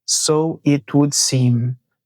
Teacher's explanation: Perceba que aqui no final da frase ele fecha a boca, é o som do M.